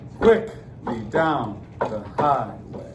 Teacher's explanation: what am I stressing? Quickly. I start stressed. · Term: trochaic